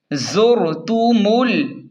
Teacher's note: میم کو ڈائریکٹ لام کے ساتھ ملا کر پڑھیں گے، یہ بیچ والا الف نہیں پڑھیں گے۔